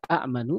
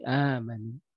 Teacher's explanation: hamzah yang kedua agar mudah pengucapannya diganti menjadi sebuah mad, diganti menjadi pemanjang, dipanjangkan. Maka alih-alih berkata a'manu menjadi amanu. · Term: mad badal